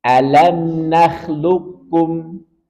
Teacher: Kemudian qaf dengan kaf, ini juga berdekatan makhrajnya. Kalau qaf pangkal lidah, kaf depan sedikit. Maka langsung masukkan ke kaf. Jangan sampai kita membaca qafnya. · Karena dia langsung kita leburkan ke kaf. Sehingga tidak ada suara qalqalah, seakan-akan qafnya hilang.